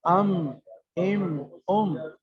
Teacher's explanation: یہ میم جو ہے وہ اندر تری والا حصہ ملتا ہے آپس میں. ام اوپر کا حصہ باہر کا، اور نیچے کا حصہ اندر کا، نچلے ہونٹ کا حصہ اندر والا حصہ، اس سے میم ادا ہوتا ہے.